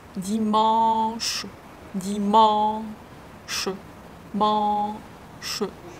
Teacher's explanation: When you pronounce dimanche, you first finish the sound, the nasal A, mon. Only then you pronounce sh.